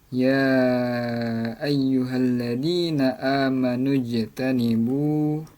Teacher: Nah, sebab huruf jim yang berharakat fathah ini berada di tengah-tengah kalimat. Nah, jadi cara membacanya huruf jim dibaca memantul tipis. Nah, jadi bacanya ialah ya ayyuhalladzina amanu jtanibu, dipantulkan tapi tidak terlalu tebal. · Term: Qolqolah Sugro, qalqalah sugro